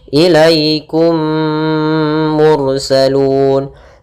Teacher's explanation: caranya adalah memasukkan mim pertama kepada kedua sambil ditahan gunahnya ilikum mursalun kemudian Mur tafhim salun ro TTI ro yang dibaca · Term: Mimi, idgham mimi